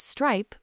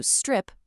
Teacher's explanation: changes stripe with a long i sound to strip with a short i sound